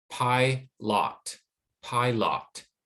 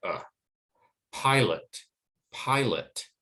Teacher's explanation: because the stress is on the first syllable the second syllable becomes unstressed and it loses that stress and the ah becomes more like